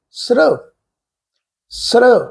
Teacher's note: ਪਰ ਇੱਥੇ ਸ ਅੱਖਰ ਪੂਰਾ ਹੈ ਵਿਅੰਜਨ ਰੂਪ ਵਿੱਚ ਆ ਪਰ ਰਰਾ ਜਿਹੜਾ ਹ ਉਹ ਅੱਧਾ ਲੱਗਾ ਹੋਇਆ ਇਹ ਮੁਕੰਮਲ ਟੋਨ ਵਿੱਚ ਆਪਣੇ ਪ੍ਰੋਨਾਊਂਸ ਨਹੀਂ ਹੋਏਗਾ ਸ ਅੱਖਰ ਦੇ ਨਾਲ ਮਿਲ ਕੇ ਪ੍ਰੋਨਾਊਸ ਹੋਏਗਾ